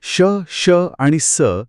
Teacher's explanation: हो, इथे ध्वनीचे घर्षण होते. या 3 वर्णांचा उच्चार करताना मानवी मुखातील हवेचा रस्ता अतिशय अरुंद केला जातो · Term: उष्मे किंवा घर्षक